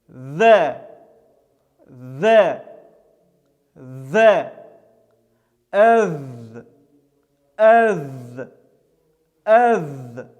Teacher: Этот звук является щелевым, звонким, с участием голоса и является мягким. Произносится через Э. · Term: Даль